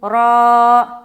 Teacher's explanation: रा, अलिफ वाली से पहले ज़बर है, अलिफ मद्दा होगा, अलिफ मद्दा को एक अलिफ के बराबर खींचकर पढ़ेंगे, जैसे रा, पुर करते हुए रा।